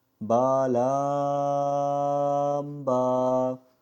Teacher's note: دونوں با کو ہم نے 1 الف کی مقدار کے برابر اور لام کو ہم نے 4 الف کی مقدار کے برابر پڑھا ہے، اور ان کے درمیان بالکل بھی سانس نہیں توڑا اور نہ ہی ٹھہرے۔